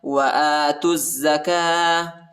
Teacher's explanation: حمزہ کے اوپر کھڑا زبر آیا ہے، اس کو 1 الف کی مقدار تک کھینچیں گے